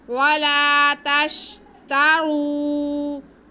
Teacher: रा पे पेश है इसलिए रा पुर पढ़ा जाएगा।